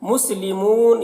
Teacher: مسلمون یہاں پر بھی وقف کریں گے تو مد عارض وقفی ہوگا، اس میں طول توسط قصر تینوں جائز ہوتا ہے